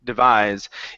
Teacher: our stress here on this word is at the end